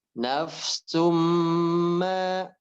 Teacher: Oke, yang nafsum, mimnya kurang lama sedikit lagi.